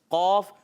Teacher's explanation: قوف زبان کی جڑ اور تالو کے نرم حصے سے ادا ہوتا ہے.